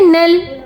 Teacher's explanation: تو یہاں ہم اگر وقف نہیں کرنا تو پھر ہم نون کو لام سے ملا دیں گے، نون لام زبر نل.